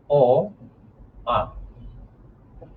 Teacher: অ, আ, এগুলো কণ্ঠ থেকে উচ্চারণ করার কারণে এগুলোকে আমরা বলি কণ্ঠধ্বনি